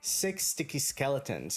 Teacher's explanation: the sound of s that we have in the word six is going to basically mix with this s from sticky